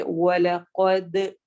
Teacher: دال پہ قلقلہ ہوگا، قلقلہ یعنی آواز ہلتی ہے، اور دال کی آواز ڈبل کر کے آتی ہے، پلٹتی ہے، اسی لیے ہم اس کو پڑھیں گے وَلَقَدْ، د کی ساؤنڈ ہوگی.